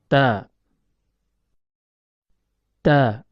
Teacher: Huruf ta keluar dari tempat pertemuan antara ujung lidah dengan pangkal gigi seri atas.